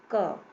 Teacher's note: अब जब ये दोनों मिल जाएंगे, अ इसमें मिल जाएगा, तब ये बन जाएगा क। अब क बोल रहे हैं तो बाद में सुनाई पड़ रहा है ना अ, तो इसका मतलब है कि व्यंजन के उच्चारण में स्वर की सहायता लेनी पड़ती है।